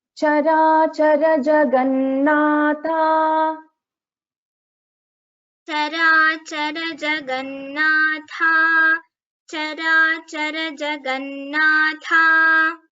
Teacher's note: Charachara Jagannatha. So Tha is a Mahaprana here. Na, there is double Na.